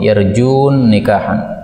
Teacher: Nun ketemu dengan Nun ini boleh idgham